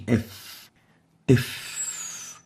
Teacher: It's categorized as a liodental because it articulates by bringing the lower lips with the teeth